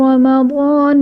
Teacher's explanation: رمضان الذی میں را پر زبر ہے، را کو پر پڑھا جائے گا۔ ضاد حروف مستعلیہ میں سے ہے، اس لیے اسے پر یعنی موٹا پڑھا جائے گا۔ الف سے پہلے ضاد پر زبر، الف مدہ کا قاعدہ جسے ہم ایک الف یعنی 2 حرکات کے برابر کھینچ کر پڑھیں گے۔